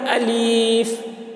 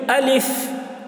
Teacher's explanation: अलिफ जल्दी बोलते हैं और आखिर में फा जब बोलते हैं तो हवा निकलती है, तो उसी तरीके से हवा निकलती है।